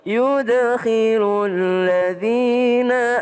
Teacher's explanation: dal sukun maka dia qalqalah pakai e.